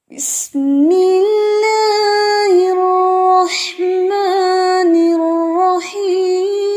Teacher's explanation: بسم اللہ میں اللہ کا نام جو ہے یہ باریک ہے